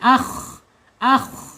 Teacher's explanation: dia mempunyai sifat istila'illa ya terangkat lidahnya